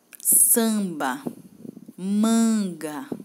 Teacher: deixam algo anasalado né que vem no nariz